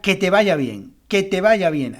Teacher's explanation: el va es la sílaba tónica